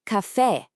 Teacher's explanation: the accent often puts the stress on the last syllable, which can feel a little weird for English speakers at first, but it's a huge pattern to get used to.